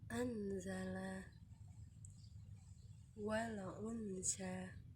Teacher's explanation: Ikhfa ini berlaku bila nun mati atau tanwin bertemu dengan huruf-huruf berikut, yaitu ta, jim, dal, zal, zai, sin, shin, shod, dot, to, zo, fa, khof, dan kaf. Maka ia harus dibaca samar-samar antara idgham dan izhar.